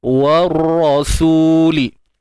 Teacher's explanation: Warra, kat sini alif lam syamsiah tuan-puan, ALS. Warra, masuk terus pada ra tu dan tebalkan dia.